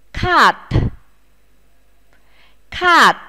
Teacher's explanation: phát âm bật hơi chữ t đứng ở cuối của từ này nhé